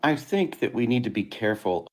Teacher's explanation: So we start high. I think next thought group goes a little lower. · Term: pitch levels